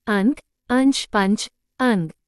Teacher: अनुस्वार ध्वनि नाक से अधिक मुख से कम